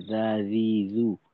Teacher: জিহ্বার আগাকে সামনের উপরের দাঁতের আগার সঙ্গে লাগাইতে হবে